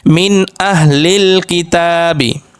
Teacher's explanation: তানবিনের বামে অর্থাৎ পরে ইজহারের ছয় হরফের যেকোনো হরফ আসলে উক্ত নুন সাকিন বা তানবিন কে গুন্না ছাড়া স্পষ্ট করে পড়তে হবে